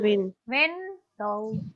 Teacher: Win will be stressed.